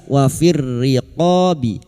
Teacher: lam takrif yang bertemu ro idgam syamsih